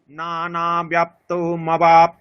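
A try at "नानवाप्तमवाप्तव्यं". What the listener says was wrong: এই যে না ন, এখানে দ্বিতীয় নকারটা হ্রস্ব আছে, আকারটা দীর্ঘ, টানতে হবে। নানাবাপ্তমবাপ্তব্যম, বোঝা গেল?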